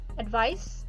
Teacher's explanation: advice finishes with a sound which is a voiceless consonant and the previous vowel of a voiceless consonant is pronounced shorter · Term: vowel length